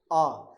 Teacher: जैसे ही हम आ बोलते हैं तो आ बोलते हुए हमारा जो मुख है वो सबसे ज्यादा खुलता है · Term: बीव्रत